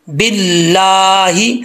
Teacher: اللہ کے لام سے پہلے زیر ہو تو اللہ کا لام بریک پڑھا جاتا ہے